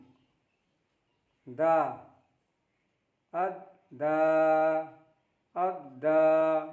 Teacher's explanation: दा pronounced from the tip of the tongue and the roots of the upper front teeth. Da is pronounced from the tip of the tongue and the roots of the upper front teeth. जब ज़बान की नोक को ऊपर के दांतों की जड़ से टच करेंगे तो वहाँ से दा का उच्चारण होगा, दा का साउंड आएगा।